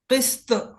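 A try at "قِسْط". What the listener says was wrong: हाँ, ता नहीं है, तो मोटा किस्त।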